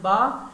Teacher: اور با بی سے, بی سے جیسے جہاں سے بی ادا ہوتا ہے, بی ہونٹوں کی جو خشکی والی جگہ ہے وہاں سے با